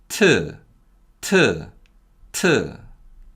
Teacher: p is a voiceless sound with heavy aspiration